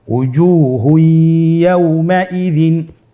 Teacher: তানবিনকে পরবর্তী হরফের সাথে মিলিয়ে গুন্নার সহিত পড়তে হবে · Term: ইদগামে বাগুন্না